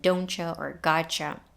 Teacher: one of which ends in a t and the other begins with a y sound we get a ch sound just like in doncha or gacha which is what happened here